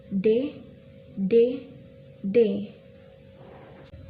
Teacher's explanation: Dan yang ketiga itu huruf D, yaitu contoh cara penyebutannya yaitu mulut sedikit terbuka, bibir tidak menyentuh, ujung lidah menyentuh langit-langit dekat gigi atas, dan terjadilah letupan